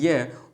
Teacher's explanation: तो मुख के अंग कहीं पे भी स्पर्श नहीं हो रहे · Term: अर्धस्वर